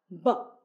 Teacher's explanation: the B sound is voiced feel the vibration in your throat as you pronounce the b sound